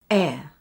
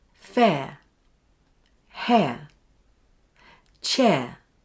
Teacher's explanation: Start with your tongue in the front of your mouth at mid height E, and then move it to a low position for ə. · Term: diphthong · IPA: /eə/